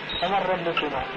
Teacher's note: النون الساكنة إذا جاءت بعدها راء تقلب النون الساكنة إلى راء، لما راح يصير عندنا رائين الراء الأولى تدغم بالثاني، النون ما تدغم بالراء، هذا مما يستحيل.